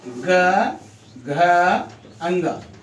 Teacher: इन व्यंजन के उच्चारण में स्वर तंत्रिका की जो गुंज है, मुख से निकलने वाली वायु में शामिल हो जाती है, जिसमें कंपन, जिसमें अधिक आवाज यानी गूंजता है, उसको बोलने में गूंजता है, तो उसे कहते हैं सघोष।